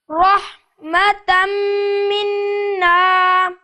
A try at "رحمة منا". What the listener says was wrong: آرام سے رحمتم منا نہیں یہ تو آپ بیچ میں کاٹنے لگ گئے ہیں رحمتم منا